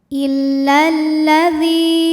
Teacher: Karena jika ada lam tasydid, lam ini terdiri dari 2 lam, lam sukun dan lam fathah. Lam yang sukun tidak dibaca sehingga kita masukkan langsung ke lam kedua.